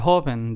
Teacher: There are only two syllables, so the syllable that we stress is the first one.